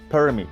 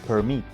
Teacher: en el stress en la primera sílaba suena así, permit, y con el estrés en la segunda sílaba suena así